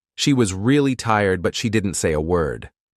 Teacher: Notice how really, didn't, and word are stressed while other words are softer.